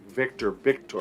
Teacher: you might also hear the V be pronounced as b as in boy